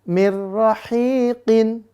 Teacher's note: Maka dia dibaca idgham bila guna tanpa dengung.